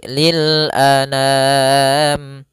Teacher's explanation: A sempurnakan hamzah, jangan anam, jangan dibaca dengan dengung atau dibaca dengan masuk hidung